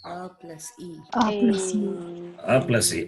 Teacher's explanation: they are the combination of the sounds guttural and palatal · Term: conjunct vowels